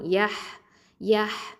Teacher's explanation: இந்த ஹேல வந்து சுக்கூன் இருக்குது பாருங்க. அப்போ ஹம்ஸ் அப்படிங்கிற சிஃபத்தை நம்ம வெளிப்படுத்தணும், காற்று வந்து வெளியில் தள்ளணும்